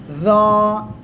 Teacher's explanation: জিহ্বার আগা, সামনের উপরে 2 দাঁতের আগা, সাথে লাগান। য। এক আলিফ টান হবে আর মোটা আওয়াজ হবে, মোটা আওয়াজ।